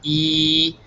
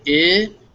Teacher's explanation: If you can feel it in your mouth, E, your tongue is right up near your teeth, E at the front. You say I, your tongue just drops a little bit and your lips relax a little bit from E to I